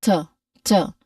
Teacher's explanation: It is a weak, unstressed, relaxed vowel sound. Here, it is a weak and stressed a vowel sound. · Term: schwa sound